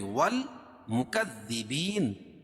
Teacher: الف لام کے بعد حروف قمری کے 14 حرفوں میں سے میم ہے، تو یہاں لام پڑھی جائے گی والمکذبین، اور یا ساکن سے پہلے زیر ہو تو یا مدہ. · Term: حروف قمریہ